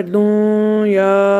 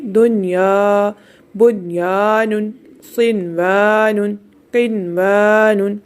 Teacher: ناک میں آواز نہیں لے کے جائیں گے، ادغام نہیں کریں گے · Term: اظہار مطلق